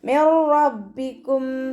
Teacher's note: നൂൻ സാക്കിനയെ റോയിലേക്ക് നമ്മൾ ലയിപ്പിക്കുന്നുണ്ട്, പക്ഷെ മണിക്കാതെ ഓതാൻ ശ്രദ്ധിക്കുക. മിർ റബ്ബിക്കും എന്ന് പറഞ്ഞിട്ട് മണിച്ചിട്ട് ഓതരുത്.